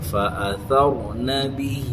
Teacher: یہاں غلطی ہوگی، را پر نہیں ہوا، را کو پر پڑھنا، سا برابر ویسے ہی رہنا